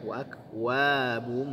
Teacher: Ada dhammatani bertemu dengan huruf mim. Pembacanya adalah idgham ma'a gunnah atau idgham bi gunnah. Ya, dengungkan ya.